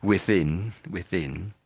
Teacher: the N at the end, I'm lifting my tongue at the front and when I get to the end sound, and that makes that sudden sort of stop to the end of the word.